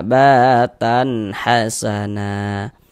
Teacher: Maka tanwin bertemu dengan huruf ha. Dikarenakan huruf ha huruf izhar halqi. Maka ini hukumnya izhar halqi. Maka dibaca jelas tak berdengung. Baca pendek saja.